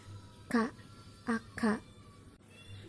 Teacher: ada di plosif atau letupan dan tempat artikulasinya berada di velar atau langit-langit lunak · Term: fonem K